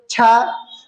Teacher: चा वर्ग छा, मतलब चा को बोलो तो तुम्हारी जीभ का अग्रभाग ऊपर वाले तलवे को जरूर स्पर्श करता हुआ नजर आएगा या आपको महसूस होगा। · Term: तालव्य